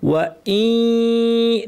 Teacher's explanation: ইয়াকে তাসদিদ দিয়ে পড়তে হবে, যার শুরুর অংশে নাক থাকবে। ওয়া ই, নাক থাকবে, ইয়া বলার সময় নাক শেষ। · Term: ইদগাম করতে হবে গুন্না সহ